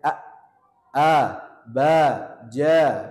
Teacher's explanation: namanya jahr karena alirannya tertahan misalnya a a ba ja Nah ini dia tertahan namanya jahar